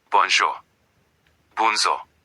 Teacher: Remember that J is joy and the on is nasal. The sound goes through your nose.